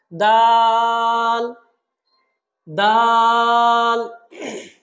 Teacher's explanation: জিহবার আগাটা উপরের দাঁতের গোড়ার সাথে